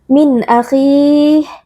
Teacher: Min akhih, nun sukun bertemu dengan hamzah izhar halqi, cara membacanya nun sukun kita baca dengan jelas tanpa berdengung